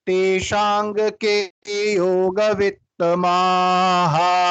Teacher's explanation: जो आखिर में दो बिंदी लगी है विसर्ग, उसको अपन कैसे पढ़ेंगे, हा के रूप में पढ़ेंगे, बड़ा हा